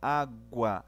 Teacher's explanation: O crescente, a semivogal fica primeiro, a vogal depois. Faz um efeito de subida.